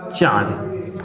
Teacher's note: जिसका उच्चारण करते समय नाक और मुंह दोनों से आए, नाक और मुंह दोनों से आए, उसे अनुनासिक बोलते हैं।